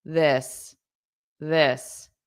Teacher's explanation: This the singular has a very short vowel sound. It's in the throat. It's unstressed.